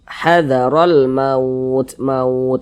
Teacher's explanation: mautnya kita panjangkan karena menjadi madlin